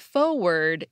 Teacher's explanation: people with a British accent tend to drop their R's